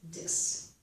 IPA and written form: dɪs (dis)